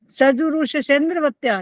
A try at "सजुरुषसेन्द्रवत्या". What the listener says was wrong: सजुरुषसेन्द्रवत्या, श की जगह स नहीं आना चाहिए।